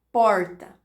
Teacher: O retroflexo, ele envolve a articulação da língua fazendo uma volta sobre si própria. Então, ele acontece a partir da curvatura da língua para trás, retroflexa. Como aparece, por exemplo, na pronúncia do R da palavra porta. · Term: aproximante retroflexa